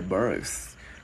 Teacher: Cái chữ sờ các bạn đưa lưỡi qua giữa hai răng thở hơi